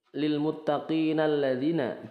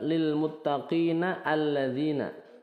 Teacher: misal hudallil muttaqinalladzina jadi Lil muttaqinalladzina bukan Lil muttaqina alladzina ya langsung ke lamnya Hamzah wasalnya tidak dibaca